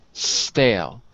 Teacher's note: it's hard to get rid of the E like in Espanish